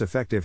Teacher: in this case the accent is in the first syllable corresponding to E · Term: accent or stress